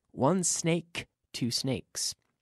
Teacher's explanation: the sound starts with the S, which is in my mouth, blowing the air between my teeth. Not in the vocal cords.